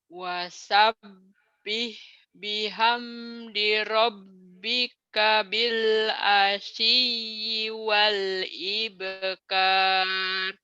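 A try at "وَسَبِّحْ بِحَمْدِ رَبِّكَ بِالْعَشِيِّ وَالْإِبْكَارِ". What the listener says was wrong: Nah, bagus.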